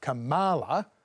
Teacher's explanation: typically Trump and Conservatives try and put the stress on the ma, not the ka, so it's Kamala.